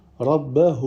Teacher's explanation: On allonge 4 ou 5 temps, vu qu'il y a le petit waw avec la vague au-dessus. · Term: silah kubra